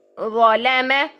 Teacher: آگے دیکھیے ضا کو دیکھیے کہ اس کو بھی ڈبل موٹا کیسے کریں گے، ظلم، لام کو ہم نے باریک رکھنا ہے، ضا کو ڈبل موٹا